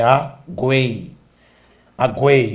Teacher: Aguei, observe que esse ele se sobressai, ele é mais forte, então ele é vogal, tudo bem? Aguei, o U e o I estão fracos, semivogal. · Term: tritongo